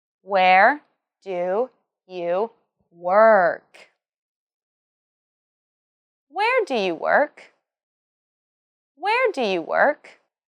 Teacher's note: Remember to emphasize where and work. Also, this is a WH question, so it has a falling tone at the end